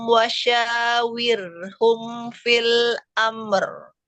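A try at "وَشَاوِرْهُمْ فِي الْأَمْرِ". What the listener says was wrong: Ya. Wirhum jangan dinabar ro sukun ya.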